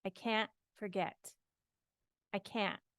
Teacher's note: when you say a t after an n in American English and I think in other englishes too we very often don't even say the T I can't forget I can't I put a little stop but · I put a little stop but I don't actually pronounce the T